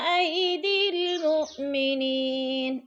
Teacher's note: مو پہ حمزہ ساکن ہے، جھٹکا دے کر پڑھیں گے